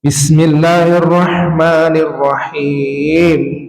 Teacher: Kalau pakai nada boleh bismillahirrahmanirrahim jadi mengayun. Yang salah adalah ngayunnya itu ada perubahan nada.